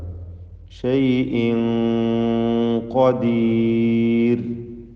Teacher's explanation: മണിക്കലിൽ തഫ്ഖീം നൽകേണ്ടതാണ്. ഷൈഇൻ ഖദീർ ശേഷം വന്നത് തഫ്ഖീം ചെയ്തുച്ചരിക്കേണ്ട ഇസ്തിഅലാഇൻ്റെ അക്ഷരമായ ഖാഫാണ് എന്നതുകൊണ്ട് തൻവീനിൻ്റെ മണിക്കലിലും തഫ്ഖീം കൊടുക്കുക. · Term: ഇഖ്ഫ ഹഖീഖി